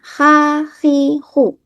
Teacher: Ketika huruf ha berharakat dibaca ha khi khu. Jadi posisinya ada di katup tenggorokan bertemu dengan dinding tenggorokan.